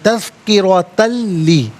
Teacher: تا پر 2 زبر کی تنوین ہے، تنوین کو لام کے ساتھ ملا کر لام کی آواز کو ادا کیا جائے گا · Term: یرملون کا قاعدہ